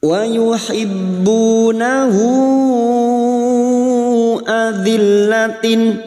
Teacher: Hal dhamir laki-laki yang berharokat panjang dan bertemu dengan hamzah. Ya, hal dhamir laki-laki yang berharokat panjang duma terbalik dan bertemu dengan hamzah. Namanya mad silah tawilah. Panjangnya 4 atau 5 harokat, kita samakan dengan mad jaiz.